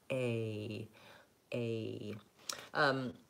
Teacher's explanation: A basically means I'm going from a mid position of the tongue to a higher position, and going from a tense A to a lax I.